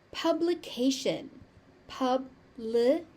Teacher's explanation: The ti is pronounced as a shh.